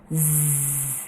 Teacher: kita merasakan ada getaran or vibration di tenggorokan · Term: voiced